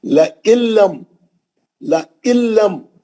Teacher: نون پڑھیں گے نہیں، سیدھا لام میں چلے جائیں گے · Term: ادغام بلا غنہ